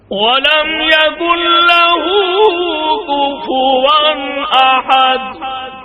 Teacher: یہاں حرکت نہیں پڑھنی بلکہ ہونٹوں کو گول کر کے پیش کی طرف اشارہ کرنا ہے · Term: اشمام